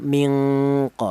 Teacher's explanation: Lebih rendah yang bagaimana? Lebih rendah samarnya dibanding dengungnya, atau dibalik, dengung lebih dominan daripada samarnya. Nah, itu namanya ikhfa adna.